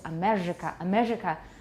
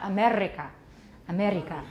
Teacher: realization of the R phoneme is the trill. And it's usually an alveolar trill.